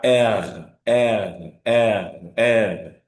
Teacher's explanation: The soft palate vibrates against the roots of the tongue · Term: vibrante